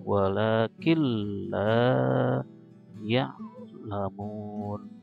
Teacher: Jadi masuk atau idgham ke la nun sukunnya, seolah-olah nunnya nggak ada.